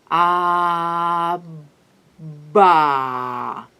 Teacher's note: For example, when I produce b, it is clear that the flow of air is stopped by both my lips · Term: bilabial